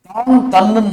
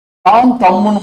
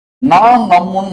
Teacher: இதான் முதல் குறுகும் புரியுதா முதல் எழுத்து குறுகும். நெடில் குறிலா மாறும் குறுகிடும் மாத்திரை அளவு குறையும். ரெண்டு மாத்திரையா இருக்குது ஒரு மாத்திரை ஆயிடும்.